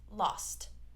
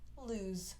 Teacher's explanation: So here we have S, lost, but on lose, Z, lose.